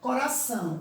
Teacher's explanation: a sílaba tônica é a última sílaba da palavra ela se classifica como oxítona